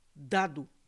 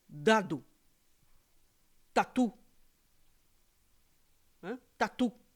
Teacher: d t veja que naturalmente a sua língua sobe pro dente é a dental